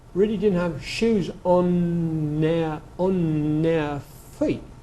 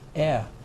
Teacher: it's almost as if he's saying, air. Being a Londoner, he has the square vowel very clear, air. He doesn't say air, although you'll hear it a lot in London now.